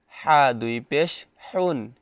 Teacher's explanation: গলার মধ্যখান হইতে উচ্চারণ হবে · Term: ছোট হা